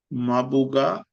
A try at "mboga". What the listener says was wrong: This is Mboga. Don't try to pronounce ma. Don't try to pronounce M as a standalone word like ma. It is Mboga. Mboga.